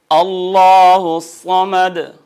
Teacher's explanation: لام جلالہ ما قبل مفتوح مضموم پر حجم ہوگا، بھاری ہوگا